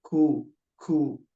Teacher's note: kaf dia pangkal lidah paling belakang menempel dengan langit-langit yang lunak dan keras ke depan, lebih ke depan sedikit daripada huruf qaf. Jadi masih ada udara yang mengalir ketika menyebutkan.